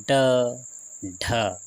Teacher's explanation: इनके उच्चारण में जीभ ऊपर उठकर झटके के साथ नीचे गिरती है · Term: उत्क्षिप्त व्यंजन